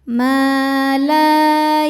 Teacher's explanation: Ini hukumnya mad thobi'i zohiri. Sebab ada alif sebelumnya berharakat fathah. Cara bacanya panjang dua harakat.